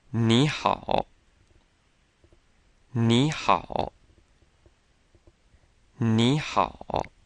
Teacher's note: when you have a word where both characters are the third tone, ni and hao, the tone for the first character changes to the second tone.